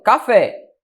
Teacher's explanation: Café é oxítona, sílaba tônica é a última.